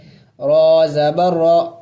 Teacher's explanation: دیکھیں را کے اوپر زبر ہے تو اس کو موٹا پڑھیں گے